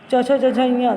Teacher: देखिए तालु पर हमारी जीभ थोड़ी सी जाती है, तो इसीलिए तालु हो गया इसका उच्चारण स्थान।